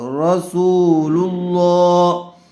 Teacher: محمد، را زبر را، سین واو پیش سو، رسو، لام لام پیش لل، لام کھڑا زبر لا، رسول اللہ۔ لفظ اللہ کی لام سے پہلے والے حرف پر پیش آیا ہوا ہے، اس لیے لفظ اللہ کی لام کو پر کر کے پڑھیں گے